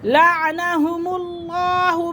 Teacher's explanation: لفظ اللہ کی لام سے پہلے زبر اور پیش آ جائے تو لفظ اللہ کی لام کو پور کر کے پڑھیں گے